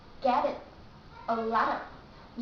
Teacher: you use flat T when you want to connect words. I mean they are separate words, but if the word which goes after letter T begins vowel, then when you read it very fast, you want to connect them, then you say get it, a lot of.